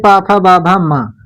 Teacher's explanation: पा वर्ग यानी पा फा बा भा मा, इसका उच्चार स्थान ओष्ठ है